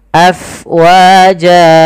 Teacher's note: Kemudian pada lafal fa, alirkan nafasnya karena fa itu harus ada angin yang kita keluarkan karena dia sifatnya hams, mengalirnya nafas.